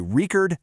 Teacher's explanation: A record, the noun, stress is on syllable one. But if you want to record something, the verb, boom, the stress jumps to syllable too.